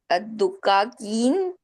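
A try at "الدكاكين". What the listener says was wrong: ठीक है, जब जो दुकान है ना उसके प्लूरल में दाल पे जबर है, दकाकीन, दुकान दकाकीन।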